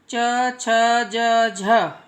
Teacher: आप देखो, ना तो ज़्यादा ही अंदर की तरफ टर्न होगी, ना दांत से टच होगी, बिल्कुल तालु से जीभ जाके टच होगी।